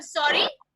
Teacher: When you say sorry in a rising tone, that means you want to say excuse me or beg your pardon.